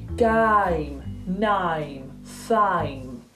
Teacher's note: It's a lot less of an A and it's more of an I. So it's actually more like you're going from an I to an E rather than an A to an E.